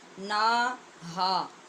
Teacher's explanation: یہاں یاد رکھنا ہے کہ دونوں کی مقدار برابر رکھنی ہے اور ایک الف کے برابر لمبی کرنی ہے